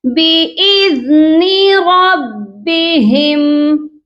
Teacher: دال کو نرمی سے پڑھنا ہے، آپ کی جو زبان ہے اس کی نوک سامنے والے دانتوں کے کنارے سے سافٹلی ٹچ ہونی چاہیے